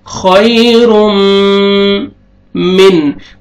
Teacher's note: خوئی تنوین کے بعد حروف یرملون میں سے میم ہے، یہاں پہ ادغام کریں گے غنہ کے ساتھ